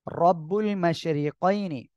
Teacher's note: রব্বুল মাশরিকাইনি, র মোটা হবে, মাশরি র নিচে জের চিকুন করে পড়বেন